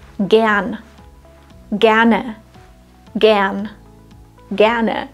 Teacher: was ist mit gern oder gerne der Stammvokal ist kurz gern das R nach kurzen Vokalen wird zwar standardsprachlich ausgesprochen aber es ist kaum hörbar